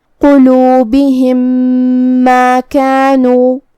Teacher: ادغام کا معنی ہے حرف کو حرف میں داخل کرنا. تو ہم میم ساکن کو میم متحرک میں ملا کے ایک ہی میم پڑھیں گے غنہ اور تشدید کے ساتھ. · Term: ادغام متماثلین صغیر